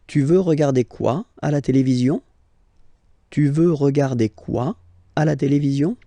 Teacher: let's raise the voice at the end to make it clear that it's a question